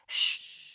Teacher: found yourself making a voiceless palatoalveolar sibilant. In other words, you whispered, shh, and you probably thought nothing of it.